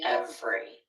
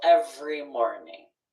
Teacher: sometimes people will pronounce this with three syllables but often dropping that middle syllable will say every